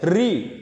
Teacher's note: री बोलेंगे तो हमारी जीभ मुड़ जाती है इसलिए इसे मुर्धन कहेंगे